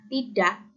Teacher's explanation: maka D-nya itu beraspirasi agak keras, berbeda dengan penutur suku lain. Nah, bunyi D yang diucapkan baik beraspirasi ataupun tidak, itu tidak akan membedakan makna dalam bahasa Indonesia.